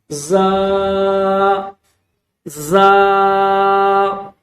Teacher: دونوں دانت آپس میں ملا کر سختی کے ساتھ زور لگا کر اس کو پڑھیں گے